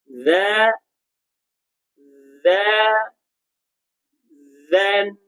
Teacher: kepala lidah kita terkeluar bukan hujung lidah kita terkeluar